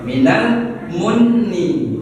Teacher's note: Tapi perlu diingat kalau huruf nun sama huruf mim tadi harus ditahan gunnahnya. Itu kita sebut dengan huruf gunnah.